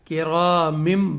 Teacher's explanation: نون ساکن کی آواز میم سے بدلے گی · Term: ابدال